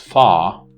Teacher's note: In the word far, the R is not pronounced, it's pronounced fa. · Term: non-rhotic